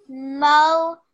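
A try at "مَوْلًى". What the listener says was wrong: Good, well done.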